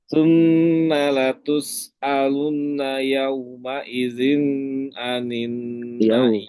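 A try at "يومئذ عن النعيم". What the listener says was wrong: Yauma idzin, jangan ditahan. Yauma idzin anin na'im.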